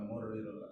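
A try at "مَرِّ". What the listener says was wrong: Jangan murri, pahit kalau murri. Marri.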